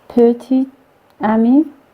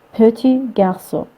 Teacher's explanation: before the consonant, the final consonant is deleted. Petit garçon, which here this final T is deleted. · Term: deletion